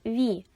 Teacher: перший звук в слові вітер приголосний звук в але він промовляється м'яко ві тому на письмі він позначиться двома рисочками наступний звук голосний